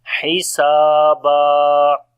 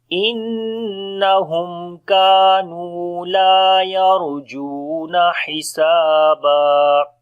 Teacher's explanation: Ha we read from the middle of the throat. Sin we long due to alif madda.